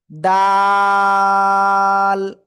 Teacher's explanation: জিহ্বার আগা সামনের উপরে 2 দাঁতের গোড়ায় লাগাবেন, লাগিয়ে 3 আলিফটা নিয়ে উচ্চারণ করতে হবে।